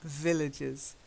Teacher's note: again drown in then shove Thank You villages yeah villages so a little bit of stress on that first syllable Ville and then adjust villages okay okay any questions nope okay